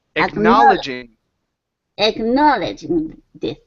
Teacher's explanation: instead of saying egno, it's egna. Open your mouth up for an ah sound.